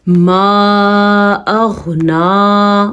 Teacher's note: غین کو پر پڑھنا ہے کیونکہ غین پر پڑھے جانے والے حروف میں شامل ہے، مطلب موٹا پڑھے جانے والے